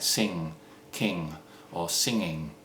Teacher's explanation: It's a velar sound at the back of your mouth. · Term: ng sound